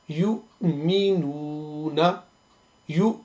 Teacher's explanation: لیکن جو غلطی اس میں ہوتی ہے وہ یہ ہے کہ عین کی آواز نہیں آنی چاہیے، کیونکہ حمزہ ہے، الف اور حمزہ ایک ہی ہے، سیم ہے.